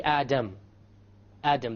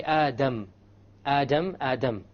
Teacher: the English D only uses the tip. Okay? So when you try to pronounce the English D, you only use the tip. When you say the Arabic Dal, you use the tip along with the upper portion. Okay? Da versus Da.